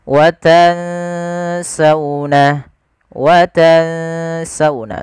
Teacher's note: kita langsung bacakan nunnya ke makhraj daripada huruf Sin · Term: Ikhfa